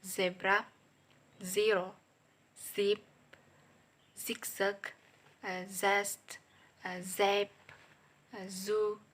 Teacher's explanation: voice alveolar fricative sound za